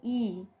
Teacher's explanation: मुख द्वार लगभग पूरा जब बंद रहता है तो ई, जब हम बोल रहे हैं तो क्या हो जा रहा है, बंद हो जा रहा है मुंह। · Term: संवृत